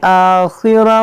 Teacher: यहाँ देखें अल यौमल आखिरा, रा पर पढ़ेंगे, खा को मोटा पढ़ेंगे, खा हुरूफ़ मुश्तालिया है